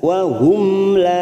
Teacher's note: maanya kita panjangkan dua harakat fathah diikuti Alif Ma kasabat wahum mim sukun bertemu lam idhar syafawi kita baca jelas